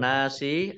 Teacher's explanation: annasnya alif lam samsiah tidak dibaca, langsung masuk ke huruf nun.